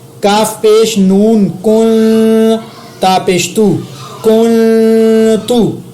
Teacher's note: میں نے نون پر اخفا کیا نرمی کے ساتھ کیونکہ آگے تا اخفا کا ہے